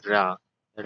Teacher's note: जिनके उच्चारण में कंपन हो उसे प्रकंपित व्यंजन कहते हैं।